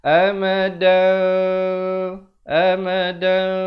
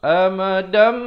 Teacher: Mim yang nipis. Bibirnya itu seakan hampir bersentuhan saja. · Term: hukum iqlab